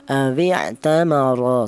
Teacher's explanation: menebalkan huruf ro yang berharakat fathah ini menggunakan lidah bagian belakang diangkat ke atas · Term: dibaca tebal